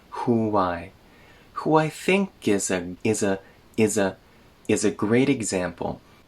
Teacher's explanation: We add a little w sound between who and I.